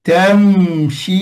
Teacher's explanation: jangan bunyi keras pada mim dia adalah izhar makna mim dia ada ghunah apabila kita tutup mulut